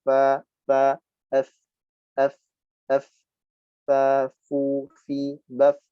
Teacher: Yang pertama kita jumpai huruf fa, gigi seri atas tempelkan pada bibir bawah. Nah, sifat huruf fa yang pertama adalah hamas. Ya, mengalir nafas.